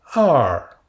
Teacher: Et le ton descendant, partir de l'aigu vers le grave.